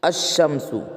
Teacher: الف اور لام آتے ہیں، مگر اس وقت لام کا تلفظ نہیں ہوتا ہے نا، لام کا تلفظ نہیں ہوتا اور لام کے بعد کا حرف مشدد ہوتا ہے، یعنی تشدید والا ہوتا ہے۔ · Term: حروف شمسی